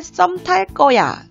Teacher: 관형사형 어미 리을 뒤에 거는 꺼로 소리가 나기 때문에 그렇습니다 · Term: 된소리